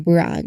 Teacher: The B sound, a voiced lip closure leads directly into the R sound. So it's a voiced release from his lips straight into the Y position brown. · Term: burr cluster